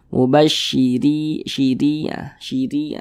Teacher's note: huruf ra dibaca tipis karena dia memiliki tanda baca kasrah sehingga pangkal lisan kita itu tidak naik terangkat ke atas